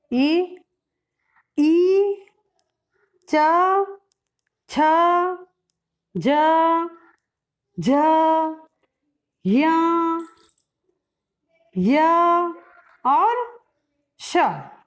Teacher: कंठ्य, कंठ से उच्चारण होने वाले वर्ण हैं अ, आ, क, ख, ग, घ, अंग। तालव्य स्थान से उच्चारित होने वाले वर्ण